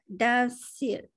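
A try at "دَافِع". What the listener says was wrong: Da bagi panjang.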